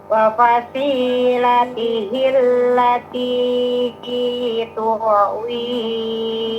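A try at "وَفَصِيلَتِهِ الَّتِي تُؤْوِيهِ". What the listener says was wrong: Jangan ke ain, hamzah biasa. Wa fasilatihi allati tuwi. Wa fasilatihi allati tuwi.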